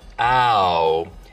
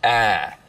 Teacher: smoothing is when you take a diphthong, like ow, and smooth it out so it's just one sound, ah.